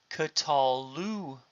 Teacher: The vowel which was reduced to schwa has now become a komets.